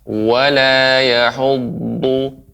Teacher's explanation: Dha itu dia mengenai ke gigi geraham atas